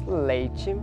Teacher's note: esse kt simplificou para um izinho nas ocidentais. Então, aqui no português nós temos leite.